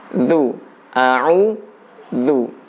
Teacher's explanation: huruf dzalnya harus dari bawah gigi yang atas, bukan dari belakang gigi. Kita ucapkan dari bawah gigi, ya.